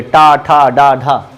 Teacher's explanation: इसमें प्रोनाउंसिएशन, उच्चारण में हमेशा जिह्वा क्या होती है? टेढ़ी हो जाती है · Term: मूर्धन्य